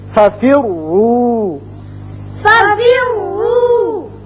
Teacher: اور اگلا قاعدہ یہ ہے کہ اگر را مشدد ہو تو پھر وہ اپنے زبر زیر یا پیش کی وجہ سے پر یا باریک ہوگا. اگر پیش آ جائے تو یہ پر ہوگا